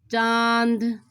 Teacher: नाक और मुंह दोनों से हवा आ रही है। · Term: अनुनासिक